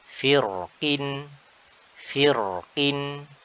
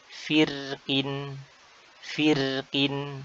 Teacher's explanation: Cara pertama adalah dengan menebalkan huruf ro. Cara kedua adalah dengan menipiskan huruf ro tersebut. Jadi ketika wasol, cara pertama kita baca dengan tebal.